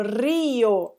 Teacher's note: é um hiato formado por uma forte e uma fraca, e o acento oral recai sobre a fraca